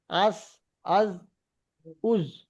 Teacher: সা জাল জ, এটা আগার সঙ্গে লাগিয়ে উচ্চারিত হয়। জিহ্বার আগা এবং সামনের উপরে দুই দাঁতের আগার সাথে লাগিয়ে উচ্চারিত হয় সা জাল জ